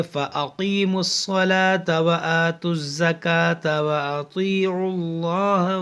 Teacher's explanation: جو خالی حرف ہے ملا کر پڑھیں گے تو خالی حرف جو ہے وہ سب گر جائے گا